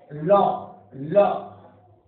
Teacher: जीभ्या का अगला भाग, पार्श्व भाग यानी अगला भाग मसूड़े को स्पर्श करता है, उससे जो उच्चारण होता है जिस व्यंजन का, वह पार्श्विक व्यंजन कहलाता है।